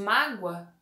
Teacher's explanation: Vocês percebem que o O acaba tendo até um som de U, porque é uma vogal fraca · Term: semivogal